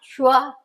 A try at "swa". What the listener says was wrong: Not Shwa. Shwa. That is Su, Swa. Swa, Swe, Swi, So, Su. Not Sha, She, Si, Shu, Shu. Swa.